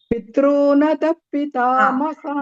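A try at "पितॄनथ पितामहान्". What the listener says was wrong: There is a tendency of ukara is coming. There is no ukara, Bagini. Pitrunatha. Ukara is not there.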